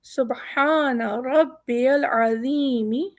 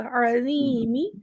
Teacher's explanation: ہمارا زبان ہماری باہر آئے گی اور موٹا بھی ہوگا